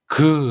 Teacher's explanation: 속 숨을 들이마셨다가 그 라는 소리를 내기 직전에 딱 멈춰 보세요 자 그라는 걸 발음 하려고 하다가 잠깐 멈추면 여러분들의 혀가 목구멍 바로 앞 쪽을 탁 막을 거예요 자 그 공기가 올라오다가 막히는 그 위치 그 위치에서 기억 소리가 · 어 공기를 혀로 그 공기 올라오는 걸 막았다 가 그 하면 혀가 내려오면서 막았던 공기가 팡 터지지 요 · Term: 파열음